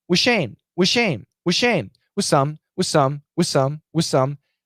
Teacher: absolutely the TH can disappear. It can be canceled. Why? Because of the S sound.